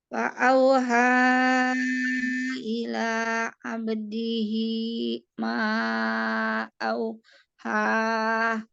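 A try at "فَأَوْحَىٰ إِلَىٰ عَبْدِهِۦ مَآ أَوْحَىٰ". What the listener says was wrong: Abdihi, ini panjang. Di ke bawah. Ma, auha. Fa'auha ila abdihi ma auha. Nah, fa'auha.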